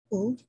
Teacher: when you pronounce the sound of oo, your tongue is slightly moving backward